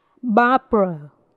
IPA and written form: ˈbɑːb(ə)rə (Barbara)